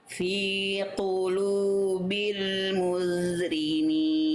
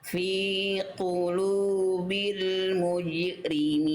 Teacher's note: huruf jim sukun. Ketika sukun dia punya sifat pantul ya, Bunda. Sudah bagus, sudah memantul. Nama sifatnya qalqalah dalam istilah tajwid.